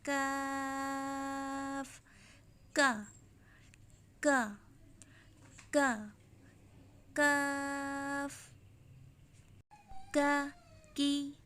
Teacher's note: کاف زبان کی جڑ اور تالو کے سخت حصے سے ادا ہوتا ہے